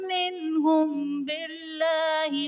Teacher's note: منہم باللہ میں نون ساکن کے بعد حروف حلقی میں سے ہا آ رہا ہے تو یہاں پر اظہار کا قاعدہ ہوگا، یعنی نون ساکن میں ہم غنہ نہیں کریں گے